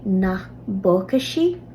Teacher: B overtakes the P sound